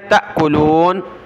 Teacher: جھٹکا دے حمزہ ساکن ہے